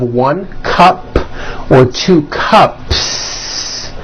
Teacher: Well then if you add an S to the word cup to make it plural, the S you add also remains unvoiced. So for example, you have 1 cup or 2 cups.